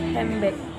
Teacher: For instance, handbag is often pronounced as handbag in casual conversation, with the D sound blending into the following B sound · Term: Assimilation